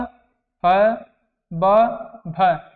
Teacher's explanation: ह ब भ इसको क्या बोलते हैं ओष से यानी ओठ से हम बोलते हैं